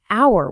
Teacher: The H is totally silent. It sounds like hour, which starts with a vowel sound. So, we say an hour.